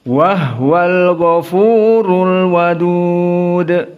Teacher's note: Maka dibaca Al-Kisai dan Abu Ja'far dalam keadaan sukuni al-ha. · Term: ha as-sakinah